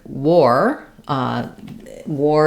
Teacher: when it comes after a W sound, the AR changes to an OR sound.